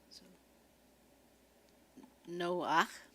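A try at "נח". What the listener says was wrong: It'd be Noach. Emphasis on the other syllable.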